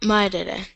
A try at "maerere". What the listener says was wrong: Ita, aspetta, non merere. Cum diftongo. Non è maerere, non merere.